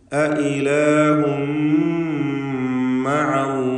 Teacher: തൻവീനിനെ മീമിലേക്ക് പൂർണ്ണമായും ലയിപ്പിച്ച് മണിക്കുക. തൻവീനിനെ പൂർണ്ണമായും മീമിലേക്ക് ലയിപ്പിച്ച് ഇത് അംബിഗുന്ന കാമിൽ നൽകി.